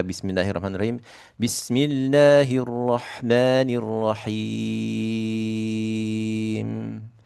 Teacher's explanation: Kalau kita baca mad arid di sukunnya 6 harokat.